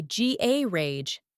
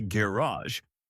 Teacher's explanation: American English tends to stress the final syllable, And British English often stresses the first.